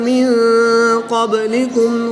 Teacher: نون ساکن کے بعد قاف حروف اخفا میں سے ہے تو یہاں پر اخفا ہوگا یعنی غنہ زمانی کر کے پڑھیں گے۔ با حروف قلقلہ میں سے ہے اور جب حروف قلقلہ ساکن ہوں تو ان میں قلقلہ خوب ظاہر ہوتا ہے تو ہم یہاں پر قلقلہ کو خوب ظاہر کر کے پڑھیں گے۔